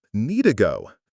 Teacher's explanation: We say need to go, basically dropping the first D. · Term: consonant to consonant linking